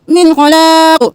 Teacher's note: یہاں پہ گنگنا نہیں کرنا، حرف حلقی میں سے خوا گیا، من خلاق. یہاں پہ خوا بھی موٹا، قاف بھی موٹا، اور قاف ساکن ہو گیا.